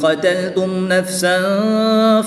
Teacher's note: میم ساکن کے بعد حرف با اور میم کے علاوہ کوئی بھی حرف آ جائے تو وہاں پر اظہار شفوی ہوتا ہے، تو یہاں پر غنہ نہیں کریں گے، میم کو خوب ظاہر کر کے پڑھیں گے۔